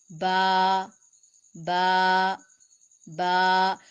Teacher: अलिफ मुंह के खाली हिस्से से, बा दोनों होंठों के गीले हिस्से से, दोनों होंठों के तर हिस्से के मिलने से। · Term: हुरूफ शफविया